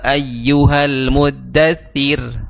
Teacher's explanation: Huruf sebelum ro berharakat kasrah maka r-nya itu tipis